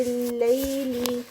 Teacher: یا لین ہے یہاں پر لیل میں، تو اس کا اسٹریچ جو ہے وہ دوسری مد سے کم ہوگا